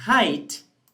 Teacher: you have a diphthong because you start with a vowel sound and you end with a different sound. This movement from one vowel to the other is called glide.